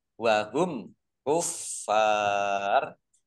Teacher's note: mim sukun bertemu dengan huruf kaf bacaan idhar safawi dibaca jelas